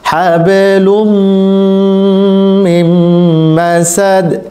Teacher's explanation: তানবিনের পরে যখন মিম আসে তখন এটিকে ইদগামে মাল গুন্না বলা হয়, এটাকে গুন্না করে পড়তে হবে।